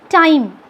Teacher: So, time, it glides from A to I. Time, A sound is there, I sound is there. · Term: Diphthongs